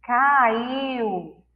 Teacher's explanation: O U está mais forte no final da sílaba.